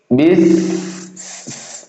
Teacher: sifat dari huruf sin ketika sukun hames. Nafas masih berjalan keluar. Bis. Nah, jadi mulut kita masih mengeluarkan ee mengeluarkan udara.